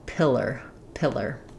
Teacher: you do need that tight American R, but no diphthong, no ah or o before it